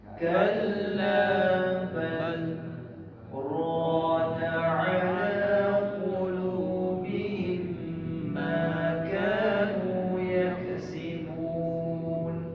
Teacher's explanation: Tuan-tuan berhenti sebentar, jangan tarik nafas baru, guna nafas yang sama. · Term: sakta